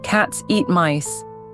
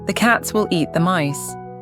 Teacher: Still three strong beats. [music] The time between cats, eat, and mice stays consistent. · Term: rhythm